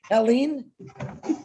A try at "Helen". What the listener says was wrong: It's Helen. Don't worry about the E at the end. It's Helen. In French, it's Hélène.